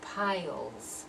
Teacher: pronounce that S as if it's a Z sound.